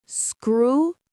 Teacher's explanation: The stress is on the first syllable. Screw. And that eyes at the end sounds like the word eyes.